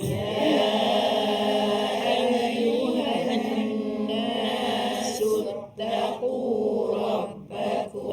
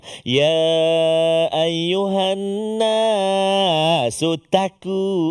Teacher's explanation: Qaf duduk dekat pangkal lidah belakang.